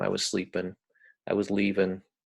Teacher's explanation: people frequently drop the kind of the final G in in an ING word